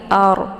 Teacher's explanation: ra ini dibaca tebal dengan posisi ujung lidah terangkat ke langit.